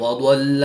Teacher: ضاد حروف مستعلیہ میں سے ہے تو اس کو پر یعنی موٹا پڑھیں گے